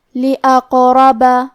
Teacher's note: سے پڑھیں گے۔ کلمت لِأَقْرَبَ میں حرف القاف پہ جزم ہے، کیونکہ قاف حروف القلقلہ میں سے ہے تو ہم یہ حرف کو ہلاتے ہوئے یہ کلمہ کو پڑھیں گے